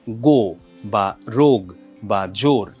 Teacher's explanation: বাংলা একাক্ষর শব্দে ওকারটা সবসময় দীর্ঘ হয়